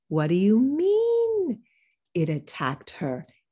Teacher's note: it attacked her is old information right it's repeated information it goes down low